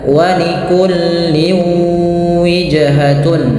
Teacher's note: Yang dimaksudkan adalah bunyi tanwin dimasukkan ke huruf setelahnya, yaitu huruf waw. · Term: idgham bi gunnah